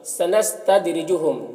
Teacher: سنستدرجہم، دال یہ حروف قلقلہ میں سے ہے، دال میں قلقلہ ہوگا، را کے نیچے زیر ہے تو را کو باریک پڑھیں گے